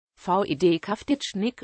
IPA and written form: vit kau̯titʃnik (Vid Kavtičnik)